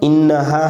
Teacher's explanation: नून में मुशद्दद में गुन्ना होगा